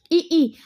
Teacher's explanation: इ ई अगर आप बोलेंगे तो आपका तालू और जीवा दोनों का उपयोग हो रहा है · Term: तालव्य